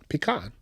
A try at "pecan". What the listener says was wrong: The short e, long a. You're calling it long e, short a.